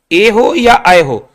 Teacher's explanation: ए आय कहें कंठ तालु, ऐसा नहीं करना कि ए कंठ से आय तालु से, ऐसा नहीं करना है आपको। ए हो या आय हो, दोनों ही कंठ तालु के संयोग से बोले जाते हैं।